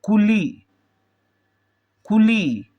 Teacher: कुली पर कु जल्दी से बोल रहे हैं तो कु को जल्दी से बोलते हैं और कु से ज्यादा वक्त ली में लगेगा क्योंकि इसमें ली में बड़ी ई का प्रयोग किया गया है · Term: छोटा उ